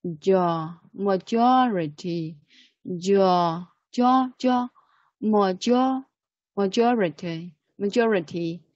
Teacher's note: There are 4 syllables together, and stress is on the second syllable.